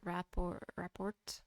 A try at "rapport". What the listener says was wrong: It's report. You don't pronounce the T. Yeah, just report.